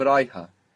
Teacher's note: Because the last vowel is a short vowel, so you lose it.